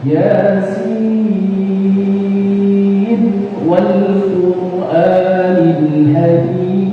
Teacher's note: Ini biasa karena waqaf di sini. Nah, kalau antum wasal, maka suara nun, ya, yang ada di Yasin itu dibaca jelas.